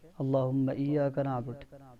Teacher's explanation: اللہ کا لام موٹا ہوگا